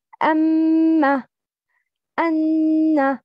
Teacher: Nasal passage is articulation point for two letters. Mim mushaddad and noon mushaddad.